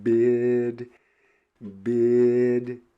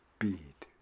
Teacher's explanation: if i have the sound map of a spanish speaker and someone says bid bid it changes and i hear it as bead